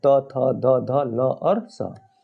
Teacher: ये जीव जब जाके दंत में टच करती है दांत में तभी इसका उच्चारण होता है